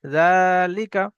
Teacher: ঠিক ওই রকম ভাবে এটা ওই লেখা আছে জালিকা, জালের উপরে খারাজ জাবর এসছে, খারাজ জাবর হলো আলিফ মাদ্দার সমতুল্য, সুতরাং এক আলিফ পরিমাণ খারাজ জাবরকে এক আলিফ পরিমাণ টান দিয়ে পড়তে হবে।